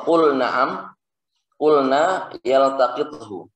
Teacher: lam pada fi'il dibaca jelas secara mutlak